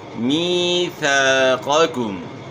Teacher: وَإِذْ أَخَذْنَا جب لیا ہم نے، میثاقکم یہاں جو ہے یا ساکن سے پہلے زیر ہے، یا مدہ ہے، تو اس کو آپ نے ایک الف کی مقدار کے برابر کھینچنا ہے، می پڑھنا ہے۔